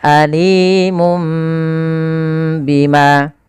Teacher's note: awalnya surah Nun Alimun Bima diganti dengan mim maka Itulah namanya iklab mengganti suara Nun diganti suara mim · Maka mu ketemu mim mati, mum ketemu ba tahan. Maka mim mati ketemu ba kan ditahan. Maka alimum bima. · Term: iqlab